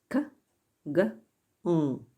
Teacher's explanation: Backlingual consonants are also called velar. They are produced with the back part of the tongue raised towards the soft palate.